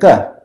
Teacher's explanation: if you use the throat and it's hard and unaspirated, you get a ka